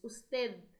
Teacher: Percebam que o D, ele sai bem fraquinho, né, nessa palavra, o D termina a língua nos dentes, usted.